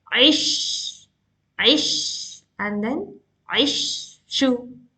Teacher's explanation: Tafashi means the sound of sheen is like spreading. It is spreading.